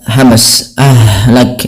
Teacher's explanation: Kemudian lafal ahlakna, ha yang dia sukun ini sifatnya ada sifat hamsnya. ya, hamas, ahlak.